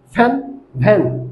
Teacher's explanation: উচ্চারণ হয় উপরের দাত নিচের ঠোটের সাথে স্পর্শ করে